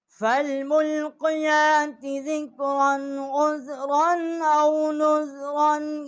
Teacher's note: اور یہاں ہم نے غنہ نہیں کیا کیونکہ آگے حروف حلقی ہے